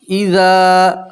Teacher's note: अलिफ मद्दा ज़ाल के साथ इसलिए आप एक अलिफ के बराबर खींच कर पढ़ेंगे।